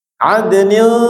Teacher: Adnil, ikhfa'nya ujung lidah direnggangin, jangan dipepetin di makhrajnya ya. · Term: ikhfa hakiki